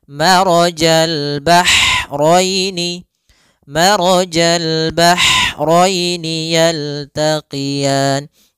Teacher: adanya aliran nafas yang kita lafalkan dan dia lembut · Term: ha kecil